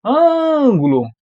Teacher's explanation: eu fiquei mais tempo no ã Então essa daqui é a parte mais forte sendo ela mais